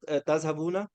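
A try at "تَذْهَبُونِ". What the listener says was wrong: तज़हबून, आपने नून के ऊपर क्या पढ़ा? इसके नीचे क्या है? जेर है। असल में ये जो आयत है, इसको थोड़ा सा यहाँ से काटा गया है। असल में ये था तर्जुमूननी, यहाँ पर एक या भी आना था आगे।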